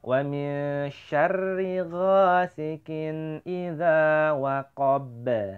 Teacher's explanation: nun ketemu shin tadi bacanya adalah ikhfa atau dengung atau samar-samar ya